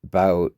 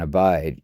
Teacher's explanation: The key I vow in about sounds different from the I and abide. Even though they look like the same sound, before the voiceless consonant, the vowel starts higher in the mouth. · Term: Canadian raising